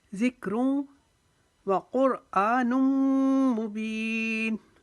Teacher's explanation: الا ذکروں، ذک، کاف نرمی سے پڑھیں گے۔ روں، اب دو پیش کی تنوین کو واو کے اندر ملائیں گے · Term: یرملون کا قاعدہ